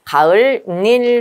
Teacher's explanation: 앞말에 받침이 있고 뒷말이 이하여유유니까 니은이 첨가되면서 가을 닐 된다고요. 그리고 나서 리을과 니은이 만나면서 유음화가 일어나서 리을 리을로 발음되겠죠.